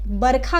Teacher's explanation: वर्षा को जो है बरखा कहा जाता है, व जो है ब में बदल गया। और जो रेफ होता है मूर्धन्य स पे, वो र में पूरी तरह बदल गया।